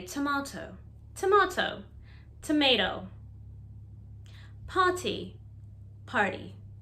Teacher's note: we love to change the t to d when it's in the middle of a word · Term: soft t